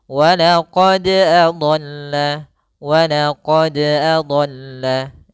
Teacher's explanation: untuk pantulan dari huruf Dal usahakan jangan sampai ada tambahan misalkan huruf hamzahnya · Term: Qalqalah